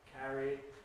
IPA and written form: ˈkæri (carry)